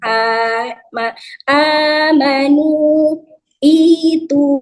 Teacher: Mad itu yang dibaca panjang dua harakat.